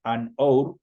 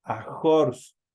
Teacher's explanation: La H no suena y automáticamente se va sobre la vocal. Dice an or, una hora. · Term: H muda